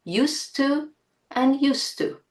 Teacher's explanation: the letters 'd' and 't' have the same articulation points. So, we cannot hear the difference between 'used to' and 'use to'.